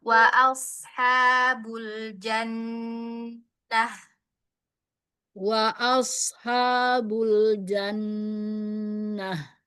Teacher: huruf shadnya coba pangkal lidahnya saja yang dinaikkan. Jangan dimonyongkan bibirnya.